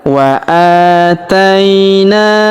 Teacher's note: huruf a kita panjangkan dua harakat karena terdapat alif kecil di atasnya